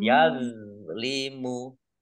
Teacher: zoknya ini bukan kolkolah, jangan dipantulkan